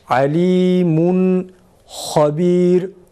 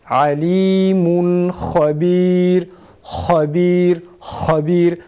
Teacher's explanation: ha boğazdan hafif bir hırıltı sesi çıkarılarak okunması gerekir